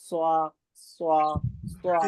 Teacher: स्वाद इसको हम मोटा पढ़ते हैं, ठीक है। जबान की नोक को ऊपर नीचे के सामने के चारों दांतों के किनारे से लगाएंगे तो स्वाद अदा होगा